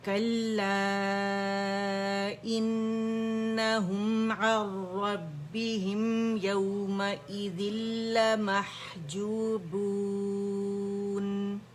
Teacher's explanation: نون کے بعد سکون کے بعد ہمارے پاس را آ رہا ہے, کمپلیٹ مرجنگ ود آؤٹ غنہ ہو رہا ہے. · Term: ادغام تام بلا غنہ